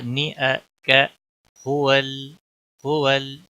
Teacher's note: लाम के ऊपर कलकला नहीं होना चाहिए, लाम को हिलाना नहीं।